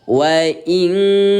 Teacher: Cara membaca ikhfa yaitu dengan cara mensamarkan bunyi nun yang baris mati selama dua ketukan. Ya, artinya yang tadinya kita baca wa ininka sekarang diubah menjadi wain ka gitu ya.